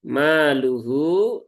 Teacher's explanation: Hunya panjang, ini ya, 4 harokat. Ya. Mat silah tawilah.